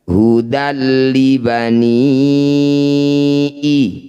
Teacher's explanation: Fathah tanwin bertemu lam disebut bacaan idgham bila gunnah. Bunyi fathah tanwinnya masukkan pada lam, tidak usah didengungkan.